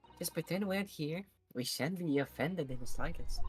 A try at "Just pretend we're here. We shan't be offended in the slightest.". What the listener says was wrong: You're mixing accents very gently.